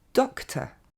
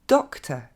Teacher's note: Deuxième mot, on ne dira pas « docteur » du coup, mais « doctor ». Ok, vous entendez ce OR qui devient simplement un E